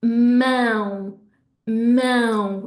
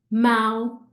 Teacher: I'm not just pushing the air through my throat, I'm pushing air through my nose at the same time to make the sound, both ends, okay? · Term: nasal sound